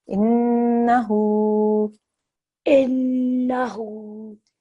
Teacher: we've got a nun gunna here, so we have to hold on that for 2 seconds.